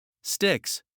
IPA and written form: stɪks (Sticks)